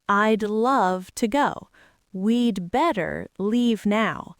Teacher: you're just attaching a soft D sound to the pronoun.